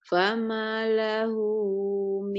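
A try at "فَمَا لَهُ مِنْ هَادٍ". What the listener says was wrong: Famanya panjang.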